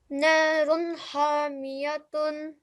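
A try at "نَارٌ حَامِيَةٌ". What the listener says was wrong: When we say the ha, try and make it slightly thinner. Okay. So smile as you say ha.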